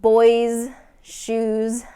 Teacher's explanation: when the S follows a vowel then we're going to get that Z sound